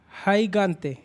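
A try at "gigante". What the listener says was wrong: हाई आई नहीं है ना, वो इंग्लिश वाला अल्फ़ाबेट नहीं, वो ई है। ही गानते। और दूसरा ग इसलिए हुआ क्योंकि ए है उसके बाद।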